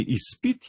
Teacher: Pri besedici izpit je pa, če se ne motim, ravno obratno, se pa tukaj letale z more prilagoditi. Se pravi, z je zveneči, ampak namesto njega izgovorimo nezvenečega.